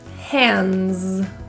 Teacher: In the word hands, the D, it comes after an N. The S sounds like a Z. That D is deleted.